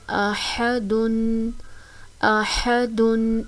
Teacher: ح زبر ح، اح، دال دو پیش دن، احدن، احدن۔ ح کی ادائیگی وسط حلق سے ہوتی ہے، یعنی حلق کا درمیان والا حصہ، اس کو احدن نہیں پڑھنا، ایسا پڑھنے سے غلطی ہو جائے گی۔